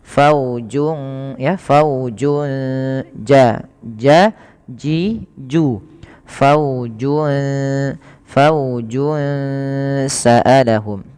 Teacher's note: ada bacaan ikhfa hakiki, yaitu cara bacanya suara junnya samarkan ke huruf sin